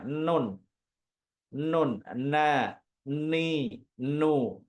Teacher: huruf nun itu berarti ujung lidahnya dia bertemu dengan apa bertemu dengan gusi bagian atas pangkal gusi bagian atas jadi tidak tidak bertemu dengan gigi gigi